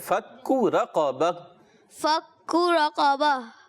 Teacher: پیارے بچے فک کو کاف باریک رکھنا ہے